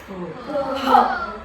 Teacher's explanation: जो श्वास आहे तो बाहेर जोराने फेकला जातो म्हणून त्याला काय म्हटलं जातं महाप्राण व्यंजन असं म्हटलं जातं।